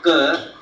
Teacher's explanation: just a part of your root of the tongue touches the upper part of the mouth, Ka, but it does not have much stress on it.